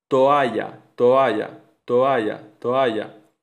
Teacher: El paso del sonido vocálico O al sonido A produce un movimiento de los labios que si se realiza de forma relajada sin con mucha relajación articulatoria puede provocar que los labios se junten añadiendo el sonido laavial oclusivo sonoro B. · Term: adición epentética